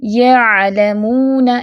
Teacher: عین کی آواز قدر نرم ہوگی اور بغیر جھٹکے کی ہوگی. اس کو ایسے نہیں پڑھنا یعلمون، ٹھیک ہے، جھٹکا بھی نہیں دینا.